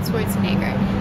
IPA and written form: ˈʃwɔrtsənɛɡər (Schwarzenegger)